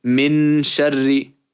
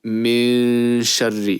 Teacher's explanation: And between the two would be min sharri. It's like you almost say the noon, but you don't. And whilst almost doing that, you bring out the sound, meaning the ghunnah. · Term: ikhfa